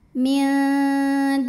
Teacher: sebelumnya baris damah maka huruf Dal kita panjangkan dua harakat minunillahi lam pada lafaz Allah atau lam jalalah dibunyikan secara tarqik sebab huruf sebelumnya berbaris kasrah maka cara bacanya ditipiskan jadi bunyinya la pangkal lidah datar